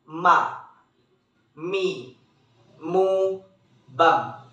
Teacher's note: huruf Ma dikeluarkan dengan cara merapatkan bibir kita.